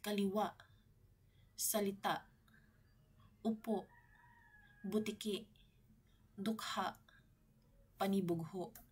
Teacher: ngunit ang diin ay may impit na tunog sa huling pantig ang mga salitang maragsa ay binibigkas ng mabilis na may diin sa huling pantig · ang impit na tunog ay parang biglaang paghinto ng tunog o hangin sa lalamunan matapos bigkasin ang salita lagi rin itong nagtatapos sa patinig at gumagamit ng tuldik na · ang pagkakaroon ng impit na tunog o glottal stop sa dulo ng salita